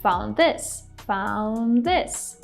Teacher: We just connect these 2 words together, we drop the D.